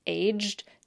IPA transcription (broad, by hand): eʤd